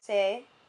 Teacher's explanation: In the first part of the word, c'est, you can hear that the accent aigu makes the E become more of an A sound. It's a long A.